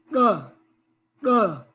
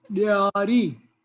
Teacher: Tongue touches the upper palate and implodes. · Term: implosion